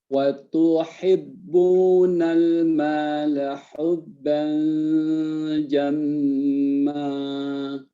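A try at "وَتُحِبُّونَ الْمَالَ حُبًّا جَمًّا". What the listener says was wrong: dekatkan lagi. Hubban, sampai seakan-akan ada suara dengungan yang ketiga. Hubban.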